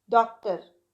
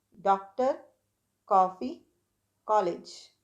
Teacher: अब ना मैंने आ बोला है ना मैंने ओ बोला है, इनके बीच की आवाज है ये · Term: आगत स्वर